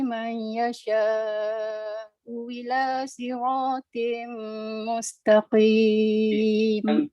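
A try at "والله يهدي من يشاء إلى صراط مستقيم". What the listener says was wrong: Tapi ada yang tak betulnya, nun mati bertemu ya itu tak dibaca dengung. Kena dengung dulu. Itu ma'al gunnah yang tu.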